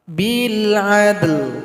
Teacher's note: Cara berhentinya sukunkan huruf lam, berikan bunyi vokal. Bil adl. Jadi sahabat Quran, ini adalah ayat terpanjang di dalam Al-Quran.